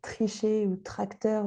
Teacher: le re est produit plus ou moins à l'avant ou à l'arrière de la bouche